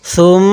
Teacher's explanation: তো আমরা এখানে গুণনা করব, কারণ মিম এবং নুনের উপর তাজদিদ হলে সেখানে গুণনা করা ওয়াজিব হয়ে যায়। তো এখানে মিমের উপর তাজদিদ আছে, এজন্য আমরা গুণনা করব।